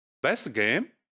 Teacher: So the t of best is deleted.